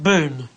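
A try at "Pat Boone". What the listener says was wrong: boon with an n b n e Boon Boon Boon Boon Boon yeah Boon yeah not D not boond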